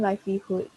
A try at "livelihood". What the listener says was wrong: 那个 livelihood 你可以拉长吗？再来一次。 Yeah, 那个 hood, livelihood. Double O 吗？拉长，记住，如果里面有 double words O O L L 还是 C C， 你要拉长那个音。Okay, like food, like for hunting food.